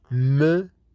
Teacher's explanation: air from the nose like in me in those nasal sounds we stop the air completely from the mouth and all the air will be pushed out from the nose because soft palate is lowered